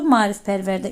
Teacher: qoşa aın biri düşür, digəri uzun tələffüz olunur